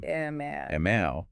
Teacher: Your mouth opens for the a and closes for the humming am.